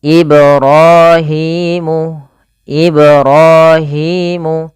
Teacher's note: Kemudian Ibrahimul qawa'ida, pada lafal ibra pantulkan huruf ba pada lafal kata Ibrahim karena pada lafal ba tersebut ada bacaan qalqalah yaitu memantul. Ibrahimu, Ibrahimu.